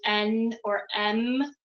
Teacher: is flowing through your mouth and your nasal cavity um so when you're saying n or M um the air is like flowing through your nose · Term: nasal sounds